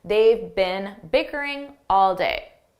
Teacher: Notice I said bin bin, a very unstressed bin.